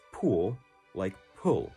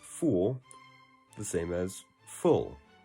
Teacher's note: Many people in Salt Lake City will pronounce pool like pull. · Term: pool-pull merger